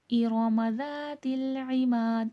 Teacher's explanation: ذا کو نرمی کے ساتھ اور تھوڑا کھینچ کے پڑھا جائے گا